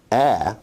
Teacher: A is a low, front, unrounded vowel